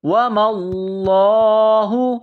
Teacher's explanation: واو کو پڑھتے وقت ہونٹوں کو گول کرنا ہے، وما اللہ لفظ اللہ کے نام سے پہلے زبر ہے تو لفظ اللہ کے نام کو موٹا کرنا ہے